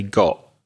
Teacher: the T on got very weak and very soft and say God it almost disappears God it stops in the